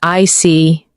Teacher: When you show understanding with I see, your tone drops slightly to show calmness.